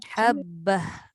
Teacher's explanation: Kalau ta berhenti jadi ha.